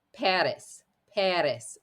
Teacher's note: very quick D sound at the very front of your mouth the tongue is gently going to tap the back of the teeth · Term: flipped R